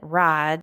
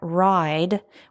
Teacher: So traditionally, the vowel in ride might sound more like the way I say it, ride, but younger speakers are pronouncing it more like ride with a clearer diphthong